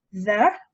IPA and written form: ðə (the)